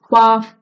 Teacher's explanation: जो आपका ऊपर के दांत है ना वो होठ पे आ जाएंगे, निचले वाले होठ पे फा बोलते वक्त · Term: दंतोष्ठ